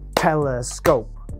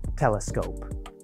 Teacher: in telescope we have the stress on the beginning of the word we also have some stress toward the end of the word the middle part of the word does not have stress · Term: primary and secondary stress